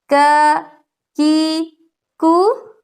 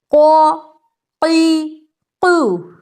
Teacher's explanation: زبان جو ہے ہماری تالو کے سخت حصے میں کاف میں، اور تالو کا نرم حصہ قاف میں